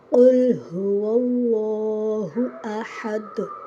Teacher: یہاں آیت میں احد بظاہر تو 2 پیش ہیں، پر وقف کرنے کی وجہ سے یہاں احد کے دال پر جزم لائیں گے تو ساتھ قلقلہ بھی کریں گے